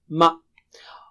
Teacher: دونوں ہونٹوں کے باہری حصے کو ملانے سے میم ادا ہوتا ہے